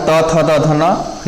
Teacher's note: त वर्ग त से लेके न तक के जितने भी वर्ण है त, थ, द, ध ये दंत से हो जाएगा